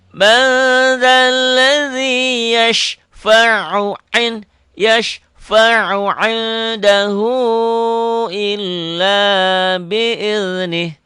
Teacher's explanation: Yasfa'u indahu padahal yashfa'u ain ya, bukan hamzah, bukan alif. Ain. Yashfa'u indahu, ainnya ikhfa.